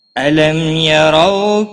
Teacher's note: را زبر کی وجہ سے پر پڑا جائے گا۔ رو واولین ہے، تھوڑا نرمی کے ساتھ کھینچ کر ادا کریں گے